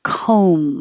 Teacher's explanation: we practice these that sound similar comb forget the B and the vowel is O like homes you have to round your lips